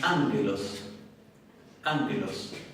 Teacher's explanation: Entonces ya nasalizaron un poco el sonido de la gama y ya no la pronuncian tan oclusiva.